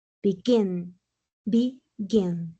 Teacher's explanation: de dos sílabas a más termina en consonante vocal consonante y lleva mayor fuerza de voz en la última sílaba